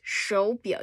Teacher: 手 表 so it's a 手 but because it's 手 表 the two third tones, so it's 手 表 you raise the first into a second tone